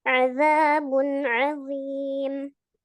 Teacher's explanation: Ayo ainnya di tengah-tengah tenggorokan.